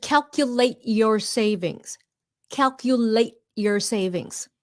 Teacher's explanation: You stop the T before it comes out. · The T at the end, stopped T.